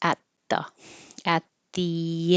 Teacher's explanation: you can see that my tongue is further forward because you can see it it's getting ready for the th